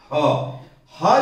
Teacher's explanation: ह जो व्यंजन है इसका उच्चारण स्थान है कंठ, कंठ से, गले से इसका उच्चारण होता है